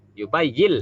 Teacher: Nah ini mudgham fi, memasukkan nun ke dalam lam dengan tidak pakai dengung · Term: Idgham bila gunah